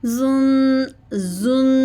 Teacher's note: زا میں زبان کی نوک نیچے والے دانتوں کے اندرونی کنارے کے ساتھ لگتی ہے